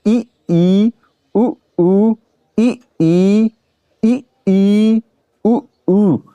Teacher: हमारा मुंह लगभग बंद, प्रायः मतलब लगभग बंद की स्थिति में रहता है, और जीभ जो होती है हमारी ऊंचाई, यानी अधिक ऊंची, यानी कि तालू की ओर ज्यादा ऊंचाई पे जाती है। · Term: समवृत स्वर